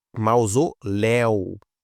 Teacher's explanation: a última sílaba é a mais forte e termina em eu